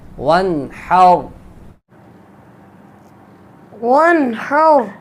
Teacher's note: نون ساکن کے بعد ہا حروف حلقی آ گیا، اس لیے یہاں پہ اظہار ہوگا. اس کو اظہار حلقی کہتے ہیں.